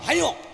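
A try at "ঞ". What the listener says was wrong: এই! হ্যাঁ ও নয় ইয়।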